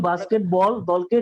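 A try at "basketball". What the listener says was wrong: বাস্কেট উচ্চারণ করার সময় এটাকে একটু লম্বা করতে হয়, বাস্কেটবল। বাস্কেটবল টিম, না এত না, he leads a বাস্কেটবল team, বলো।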